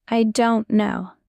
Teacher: Stress is on. Don't. Say it like music.